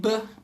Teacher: every time I say Buh I can feel it vibrate.